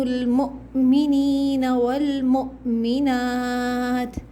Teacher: یہاں پر حمزہ پہ سکون ہے تو جھٹکا دیں گے